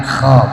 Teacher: Kunu kirodatan kho, bukan ko, jangan jadi ko, kirodatan kosiin, itu jadi ko itu ya. Kho dikorokin, kalau nggak bisa ngorok minimal jadi ha, hosiin, itu masih mending ya.